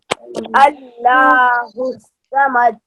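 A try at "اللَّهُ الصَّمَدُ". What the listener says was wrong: अल्लाह नहीं पढ़ा जाएगा, अल्लाह, अल्लाहुस समद, स्वाद को मोटा पढ़ा जाएगा, अल्लाहुस समद। ये दूसरी आयत को सही करें पहले, अल्लाहुस समद,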